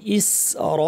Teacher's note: ইস, হামজাটা শক্ত হবে, ইস, সিন পাতলা কিন্তু র ভারী, ইস র, রয়ের উপর একটা আলিফ আছে, এরপরে যেহেতু হামজা আছে যে জন্য মাদ মুত্তাসিল, লম্বা করে দুই আলিফ টেনে। ইস র, টানটাও ভারী হবে যেহেতু র এখানে ভারী।